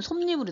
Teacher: 이불에서 없던 이에서 니은이 더 생기기 때문에 니은 첨가거든요